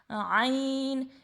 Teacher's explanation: اس کو بھی ہم لوگ 3 الف لمبا کریں گے. اس کا مخرج کیا ہے؟ وسط حلق، یعنی حلق کے درمیان والے حصے سے